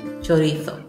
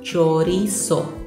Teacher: In Spain, you will pronounce the Z as a TH